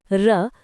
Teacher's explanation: जिसके उच्चारण में जीभ तालू से लुढ़क कर स्पर्श करता है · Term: लुंठित